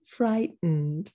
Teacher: are your teeth this is your tooth fridge you say fright you stop the t fright and then you go through your nose for the next syllable